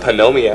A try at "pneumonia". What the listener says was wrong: The P is silent.